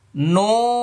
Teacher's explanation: নুনের শুরুতে ঠোঁট গোল হবে, শেষে ফাঁকা হয়ে যাবে, কারণ শুরুতে পেশ আসছে। মনে রাখতে হবে, যেখানেই পেশ থাকবে মানে যত পেশ থাকবে তত ঠোঁট গোল হবে।